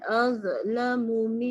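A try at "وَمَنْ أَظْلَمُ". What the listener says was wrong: dia ada bunyi z belakang tu tak hilangkan.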